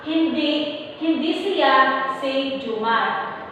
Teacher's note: tumitigil tayo sa siya dahil dito nakalagay ang impit o ang paghinto. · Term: antala